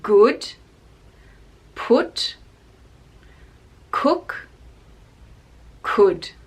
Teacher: so just /ʊ/ sound with the lips and very short